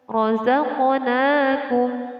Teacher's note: Qalqalah artinya memantul. Jadi qaf ini adalah termasuk huruf qalqalah dan harus dibaca dengan memantul.